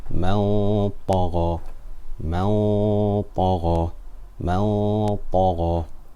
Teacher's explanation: In man tagha, the ta was full mouth, so the ghunna was full mouth.